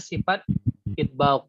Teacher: huruf kho ini enggak punya sifat itbaq. Dia punya sifat apa? Infitah. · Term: sifat infitah